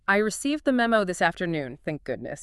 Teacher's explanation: You'd have a high pitch at the start, then it would come down and get softer. Stress on received.